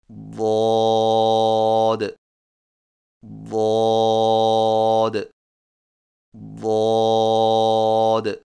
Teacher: زبان کے موٹے کنارے کو اوپر والی داڑھوں کی جڑ پر آہستہ آہستہ نرمی سے لگا کر خوب موٹی اور دراز آواز میں پڑھیں